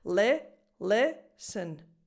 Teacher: the dominant syllable is le, and this is a lax E sound. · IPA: [ɪ]